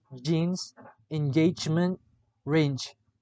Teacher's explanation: The description of j is voiced palato-alveolar affricate.